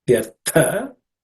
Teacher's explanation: The tha in the vyartha is also an aspirated consonant because it's the second letter in the tha varga.